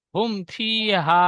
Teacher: মিম সাকিনের পরে বা মিম ছাড়া অন্য অক্ষর ফা এসেছে, তাই মিমকে বিনা গুণায় জাহির করে তাড়াতাড়ি পড়তে হবে, একে ইজহারের স্বাভাবিক বলে।